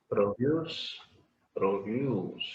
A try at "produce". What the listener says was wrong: Produce has to be slightly longer.